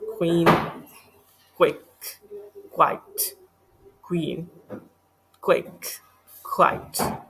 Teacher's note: इसमें हम के डब्ल्यू साइन जैसे क्वी इस तरह के साउंड प्रोड्यूस करते हैं. अपने लिप्स को हम राउंड कर लेते हैं